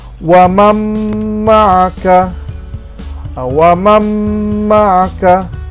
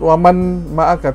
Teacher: Nun kita buang, terus saja masuk kepada huruf mim di depannya. Wamam, kita tidak sebut waman ma'aka, tidak. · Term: idgham